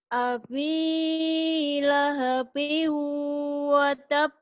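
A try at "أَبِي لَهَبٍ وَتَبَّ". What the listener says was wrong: Bukan api, abi, B. Abi. Bukan api, abi. Ulang lagi.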